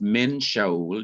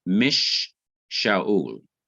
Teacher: And so you have, instead of min Shaul, you have mish Shaul. There is a doubling or repetition of the shin, the sh of Shaul.